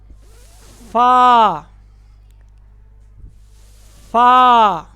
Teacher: اوپر والے 2 دانتوں کا سرا نیچے کے ہونٹوں کے اندرونی حصہ سے لگے گا. یہ جہاں پر اکثر تری رہتی ہے، یہاں پر ان 2 دانتوں کا سرا.